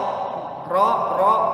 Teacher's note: kalau huruf ro tidak boleh monyong, walaupun bunyinya o